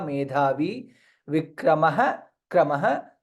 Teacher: Medhavi dha mahaprana and dirgha